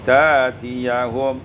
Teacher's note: ibdal hamzati alifan, ditukar hamzah dengan alif menjadi ta'tiyahum.